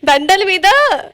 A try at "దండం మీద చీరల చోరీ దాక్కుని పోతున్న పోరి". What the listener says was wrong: దండలు కాదు దండం.